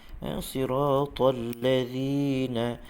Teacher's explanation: zi harfu zal, hujung lidah sentuh hujung gigi atas